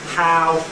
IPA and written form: ˈhaʊ (how)